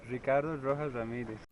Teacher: her last name has a double R in it, and she says it like an English R sound